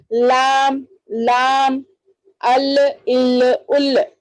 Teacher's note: زبان کا جو کنارہ ہے ہمارا اس کو سامنے کے دانتوں کے مسوڑوں کو لگانے سے لام ادا ہوتا ہے